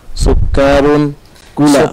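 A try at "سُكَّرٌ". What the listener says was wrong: Sukarun atau sukarun? Sukarun pendek. Kafnya pendek kan.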